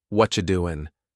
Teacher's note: Doesn't sound like five words. It melts into what you doing.